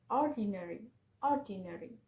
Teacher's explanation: Four syllable word with the stress on the first syllable is ordinary